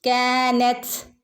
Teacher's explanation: നമ്മൾ തന് മുകളിൽ സുക്കൂന് വരുമ്പോൾ ത് ത് എന്നുള്ള ശബ്ദം വരണം പുറത്തേക്ക് ത് ഒരു കാറ്റ് പോകുന്ന രൂപത്തിൽ